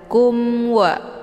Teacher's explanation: secara jelas atau jelas bunyi mnyaukupan saja tidak perlu ditahan kumwa hukum bacaan izhar syafawi jelas tiada berdengung